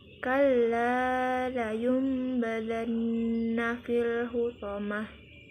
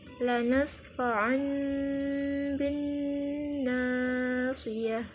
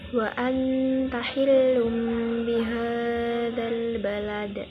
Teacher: cara membaca iqlab adalah dengan merapatkan kedua bibir, mendengungkan, dan menahan selama 2 harkat atau ketukan